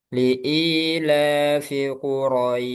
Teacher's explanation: Jadi roi itu dipanjangin dulu roi. Jangan langsung ke syin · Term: mad lin